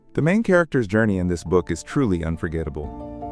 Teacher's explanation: unforgettable has that stress on the third syllable.